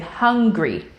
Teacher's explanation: if the ing sound comes in the middle of a word and is broken up by syllables you may hear both the ng and the g sound